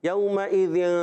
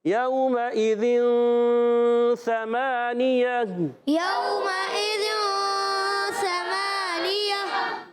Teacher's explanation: آپ نون کے مخرج میں زبان کو ہلکا سا ٹچ کریں گے، ہلکا سا ٹچ کرنا ہے، پورا زور سے پریشر سے نہیں لگانا، صرف ٹچ مارنا ہے اور پھر آپ نے ناک میں آواز لے جائیں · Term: اخفا